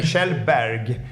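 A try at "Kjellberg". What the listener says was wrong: the G is so strong it's not that strong it's over pronounced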